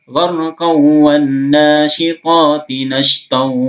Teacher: gharqaw bukan gharqa lagi tapi gharqaw, langsung masuk ke waw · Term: idgham bi gunnah